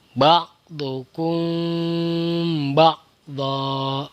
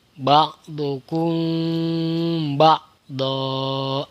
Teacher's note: Jadi mimnya tidak boleh ditutup rapat. Ya, agak dibuka sedikit dan ditahan 3 harokat. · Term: ikhfa syafawi